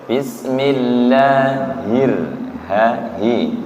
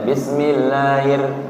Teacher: Perhatikan juga ketika membaca bismillah, hi-nya tidak sampai hilang, Bismillahir, hi, tidak bismillahir, kan hi-nya kayak hilang, jangan sampai hilang.